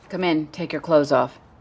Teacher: there is no th sound it is pronounced close like close the door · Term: the th is silent